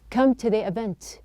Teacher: the T is pronounced as a flap